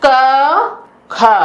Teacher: उच्चारण में स्वर यंत्रों में कंपन नहीं होता है। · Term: अघोष व्यंजन वर्ण